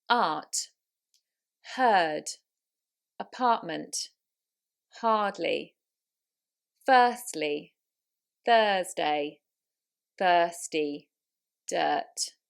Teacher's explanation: So you want to skip the R, it's not rhotic. So in the States and in different regions of the UK, you would still hear it.